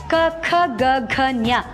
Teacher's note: ಹೊಟ್ಟೆಲಿರೋ ಉಸರನ್ನ ಕಂಠದ ಆಳದಲ್ಲಿ ತಡೆ ಹಿಡಿತೀವಿ ನಾಲ್ಗೆ ತುದಿನ ಮುಂಭಾಗಕ್ಕೆ ಒತ್ತಿ ಅಲ್ಲಿನ ಉಸರನ್ನ ಹಿಡಿದು ಚೇತೀವಿ ನಾಲಿಗೆ ಹೊರಳಿಸಿ ತುದಿನ